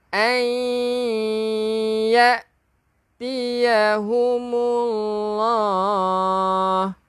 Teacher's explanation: nun kosong bertemu dengan ya, idgham bi gunnah, memasukkan dengan dengung.